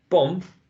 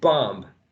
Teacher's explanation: you need to choose the short and lax o as in bomb, or the long as in bomb